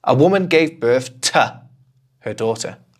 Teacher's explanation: Okay, so actually I'm not saying to, and I almost never say to. I just say t. Just one sound almost, right?